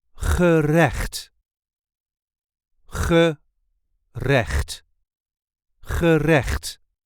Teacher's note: there is a light emphasis on the second syllable